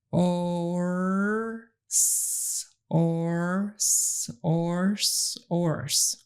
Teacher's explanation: For example, for ors, instruct your child to get a good or first and then move the tongue up behind the teeth to make that final S sound